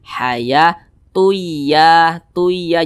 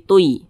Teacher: maka bunyi tanwin ini dimasukkan ke huruf ya makanya ini kita baca Haya tuya tuya jangan Tunya jangan Tun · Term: idgam bhunah